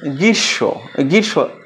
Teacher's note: ম ফলা উচ্চারিত হবে না, তবে একটু সামান্য নাসিক্য প্রভাবিত হয়ে ওঠে ওই শব্দের সঙ্গে।